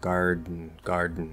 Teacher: you can do uh stop d get a little nasal plosive in there · Now, I've talked about before how garden, you can actually say garden, just like mountain. Okay, you can do stop D, get a little nasal plosive in there.